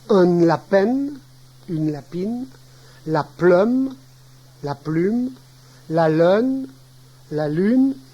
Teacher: toute voyelle orale, suivie d'une consonne nasale, est légèrement nasalisée. Cette nasalisation de la voyelle est indiquée à l'aide d'une consonne nasale doublée.